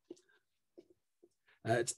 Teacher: oh so when you're really worried about something you go uh it's a nasal inverse glottal which is supposed to be impossible in english but we do it